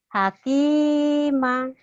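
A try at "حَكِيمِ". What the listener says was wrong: Hakimi. Kok jadi ma? Hakimi.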